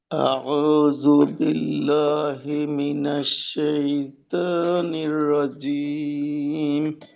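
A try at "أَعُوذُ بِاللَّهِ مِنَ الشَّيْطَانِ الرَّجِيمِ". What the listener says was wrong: আপনার আউযুবিল্লাহর ক্ষেত্রে ত এর উচ্চারণটা মাঝে মাঝে তা এর মধ্যে শোনা যায়।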